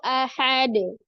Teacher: pada saat di akhir atau pada saat waqaf huruf dalnya qalqalahnya adalah Kubro besar ya kalau di wasal atau di tengah disambung dia qqalahnya Sugra